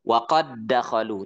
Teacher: Huruf ba perhatikan. Idrib bi'asaka. Tidak ada qalqalah.